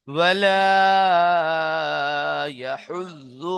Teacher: না দ উচ্চারণ হবে না জ উচ্চারণ হবে, দুটির মাঝখান দিয়ে আওয়াজটি বার হয়ে আসবে